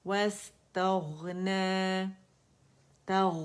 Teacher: رخاوہ شو کریں گے، اور اس میں استعالہ بھی ہے تو اس کی جو آواز کی موٹائی ہے وہ بھی ہم نے شو کرنی ہے